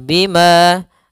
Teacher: lembut saja yalum Bima kemudian padafal Bima ada Mad thii yaitu fathah bertemu dengan alif panjangnya dua harakat